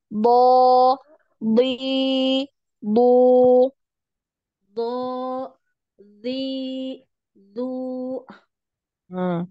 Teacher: ee pangkal lidahnya dinaikkan ya biar tebal